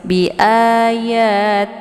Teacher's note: karena harokat sebelum lafzul jalalahnya adalah kisra, maka lafzul jalalahnya dibaca tipis. Bi ayatillah, tillah jangan dibaca tillah ya karena tipis ya. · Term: tarkikun murakkakun